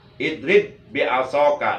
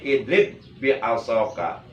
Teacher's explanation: ba yang pertama yang sukun itu wujubul idgom, wajib diidgomkan, dimasukkan kepada ba yang kedua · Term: idgom mutamasilain